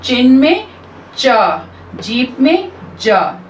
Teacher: वो sounds जो इस स्ट्रक्चर के साथ होते हैं कि एकदम से बंद होना, complete closure मतलब बिल्कुल बंद होना, and slow release फिर धीरे धीरे हवा का रिलीज होना, उनको हम affricates भी कहते हैं।